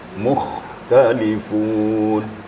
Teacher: Apabila ada huruf dhamma sebelum kha, apalagi kha itu sukun, maka kha-nya lebih menonjol. Lebih ada penekanan. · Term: huruf kha